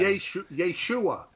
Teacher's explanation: Accent is a second syllable, by the way. But they always go Yeshua.